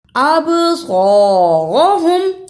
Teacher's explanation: اب، صاد زبر خا، اسے سین زبر سا نہیں پڑھنا. صاد آواز تھوڑی سی موٹی ہوئی پیچھے سے، صاد زبر خا، را زبر غا، ہا پیش میم ہم، اب قاہم.